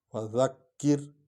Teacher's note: فذکر، فذکر، فا حرف شفوی ہے، اور ذال جو ہے اس کو نرم پڑھیں گے، زینہ بن جائے، اور کاف پر شد ہے، ذال اور کاف کو اکٹھے پڑھیں گے، اس پر زور آئے گا کیونکہ 2 بار پڑھا جاتا ہے شد والا حرف۔